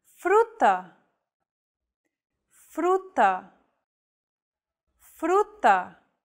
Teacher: This trill sound is done by lightly tapping the gum ridge behind your upper teeth with the tip of your tongue. It should be a quick, striking motion, similar to the sensation you get when pronouncing the T in words like butter, cutter, and so on.